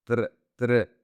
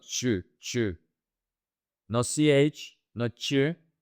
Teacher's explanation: TR in Spanish is tr, tr. It's not ch. No CH, not ch, it's tra.